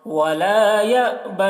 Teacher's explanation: ولا یا میں جھٹکا لگے گا، حمزہ ساکنہ ہے